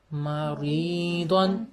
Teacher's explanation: را کے نیچے زیر ہے تو یہ یا معروف کی آدھی آواز ہے، پھر آگے جزم والا لگ گیا تو یہ پوری آواز ہو گئی، اور پھر اس کے بعد دو جو ہے اس کے اوپر دو زبریں اور ساتھ الف ہیں۔ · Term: یا معروف کی پوری آواز